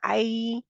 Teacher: रहे हैं आई फिर भी आपकी जुबान की जड़ ऊपर उठ जुबान का दरमियानी हिस्सा ऊपर उठता है लेकिन उसके साथ तालू के साथ जाके चिपकता नहीं है ठीक है लग नहीं जाता जैसे हमारे काफ और कैफ के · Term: हरूफ लीन